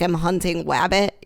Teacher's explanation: instead of saying your R's it comes out like a W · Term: gliding